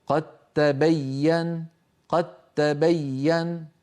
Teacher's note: الحالة الثانية إدغام الدال في التاء، نحو قد تبين، قد تبين، فلا يبقى للدال أثر إن وصلنا